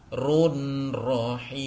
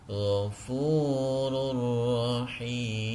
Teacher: Ya, kita bisa melihat di sini yang masuk dalam golongan atau kategori idgham bila gunnah adalah pada huruf rahim. Langsung dimasukkan tanwinnya ke ra